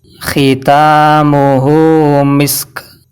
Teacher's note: maksudnya mengalirnya nafas ketika melafalkan huruf karena lemahnya penekanan terhadap makhrajnya jadi cara bacanya itu dengan cara berdesis dan nafas terlepaskan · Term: huruf Hamas